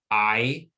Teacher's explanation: the long i sound i is a diphthong which is a sound that starts from one part of the mouth and moves to the other so it starts at the bottom front of the mouth and